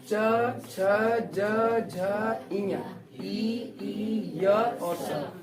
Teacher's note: अब तालु से क्या बोला जाता है, च, छ, ज, झ, ई, य और स। ये जो वर्ड है वो किससे बोले जाते हैं आपके, तालु से।